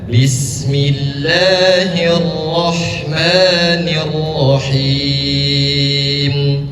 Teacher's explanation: bismillah dua harakat saja, enggak perlu panjang, enggak perlu lebih daripada dua harakat, enggak perlu bismillahir itu sudah masuk tiga harkat.